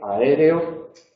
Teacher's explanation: En aéreo le ponemos acento porque estamos ante una esdrújula. Aéreo hay 4 sílabas, es la segunda sílaba la tónica, por lo tanto es la antepenúltima.